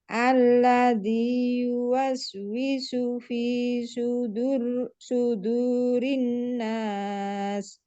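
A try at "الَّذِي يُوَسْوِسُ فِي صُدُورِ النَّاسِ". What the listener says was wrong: Punya ini lebih tebal lagi ya Bu ya. Supaya berbeda dengan su yang di sini. Kalau ini kan sin. Kalau ini su. Yuwaswisu fi su.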